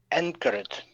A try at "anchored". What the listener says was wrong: Very good.